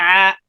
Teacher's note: آپ نے اس فرق کو سیکھنا ہے کہ آ کی آواز بالکل گلے سے جب نکلتی ہے بالکل سیدھی آواز نکلتی ہے آ، لیکن عین کی جو آواز ہے یہ تھوڑا خم لے کر نکلتی ہے. گلے کو تھوڑا خم دینا پڑتا ہے، نچوڑنا پڑتا ہے، گھمانا پڑتا ہے تھوڑا سا، تو پھر عین کی آواز ہوگی